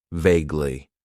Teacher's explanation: It has two syllables and the stress is on that first syllable.